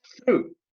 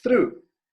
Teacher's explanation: Não precisa vibrar, só língua entre os dentes.